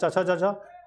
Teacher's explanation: चवर्ग जो है वो तालु से बोला जाता है